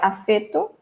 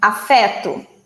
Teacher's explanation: Portuguese people normally say vowels with a closed sound, while we Brazilians will say them with an open sound.